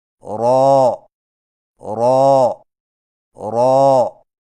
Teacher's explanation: را کی ادائیگی میں زبان کی نوک کی پشت کو اوپر والے دانتوں کے مسوڑوں سے لگا کر موٹی آواز میں پڑھیں، یعنی رو رو رو۔